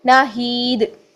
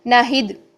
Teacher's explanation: हम इसको 2 हरकत नहीं लंबा कर रहे, हम इसको सिर्फ 1 हरकत पढ़ें, तो हमारे पास सिर्फ और सिर्फ जेर रह जाएगी